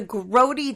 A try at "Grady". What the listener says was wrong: Don't say Grody, because that's a different character. Grady, not Grody.